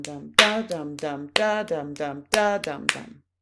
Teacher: But for now, just be aware that dactylic hexameter includes, in each poetic line, 6 segments of 3-beat syllables, with the emphasis on the first of the 3 syllables